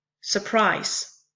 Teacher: a foot in poetry the first foot is I am being an unstressed followed by stressed syllable surprised that's an eye amp the second one is the opposite